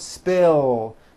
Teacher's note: spill ends with a voiced l sound